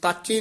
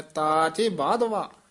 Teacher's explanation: ਤਚੇ ਨਹੀਂ ਕਹਿਣਾ ਨਾ ਕਹਿਣਾ ਤਾਚੇ ਸਨਬੰਧਕ ਬੋਲਣਾ ਹੈ ਲਮਕਾ ਕੇ ਬੋਲਨਾ ਹੈ